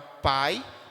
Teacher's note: a palavra pai o i é uma semivogal tá saindo muito mais fraco